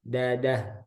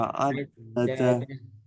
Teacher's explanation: coba dalnya jangan ada udara